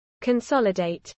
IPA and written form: kənˈsɒlɪdɛɪt (consolidate)